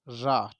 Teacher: तो आप ध्यान रखेंगे कि जिस व्यंजन को बोलते समय या जिसके उच्चारण में जीभ मुख के बीच में तेजी से लड़खड़ाती है, उसको हम प्रकंपित व्यंजन बोलते हैं या फिर लुंठित व्यंजन बोलते हैं